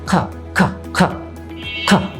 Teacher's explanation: The back of your tongue goes up and you are going to push out some air. আমরা আলোচনা করেছিলাম যে আপনার জিহ্বার পিছনের অংশটাও উপরে উঠে যাবে এবং মুখ থেকে একটা বাতাস বেরোবে, জাস্ট লাইক দিস, খা খা খা খা।